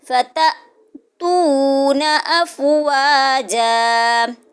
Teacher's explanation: جب الف کے اوپر یہ جزم آتی ہے حمزہ بشکل الف، تختی نمبر 2 میں پڑھتے ہیں ہم، تو ہم اس کو تھوڑا سا جھٹکا دے کے پڑھتے ہیں۔